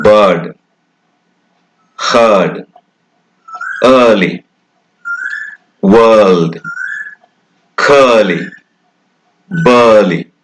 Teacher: this sound, which is a long sound, if you like, a long form of schwa, as in bird, heard, early, world, curly, burly.